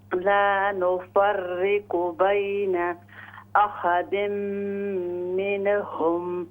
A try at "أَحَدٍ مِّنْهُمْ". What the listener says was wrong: من झटका ना दे इसको कलकला न करें أحد منهم أحد منهم कोशिश कीजिए नून साकिन में अहदिम मिन ये झटका है, ये कलकला है।